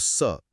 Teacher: हाँ, परीक्षा के लिहाज से यह भी याद रखना होगा कि त वर्ग के साथ साथ व्यंजन ल और स यानी सड़क वाला स भी इसी दंते श्रेणी में आते हैं। जब स बोला जाता है तो जीभ दांतों के बहुत करीब आ जाती है और हवा एक संकरे रास्ते से सीटी जैसी आवाज के साथ बाहर निकलती है।